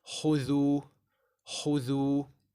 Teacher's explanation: So instead of making them both full, you're going to make one full and one empty while keeping the mouth rounded for both letters. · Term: full mouth kha